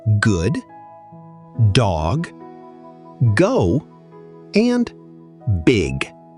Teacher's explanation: The voiced velar plosive sound, G, as in good, dog, go, and big.